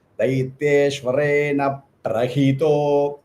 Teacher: I give that more, that extra matra. I hold that pra for some more microseconds.